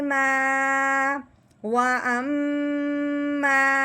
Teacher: الف سے پہلے حرف پہ جب زبر آ جائے تو اسے ایک الف کے برابر لمبا کیا جاتا ہے